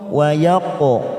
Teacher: Tillahi wa yaqtulu wa yaqo ada huruf qaf sukun namanya qalqalah sugro karena mati di tengah kalimat